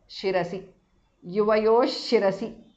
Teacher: Visarga changes to shu there.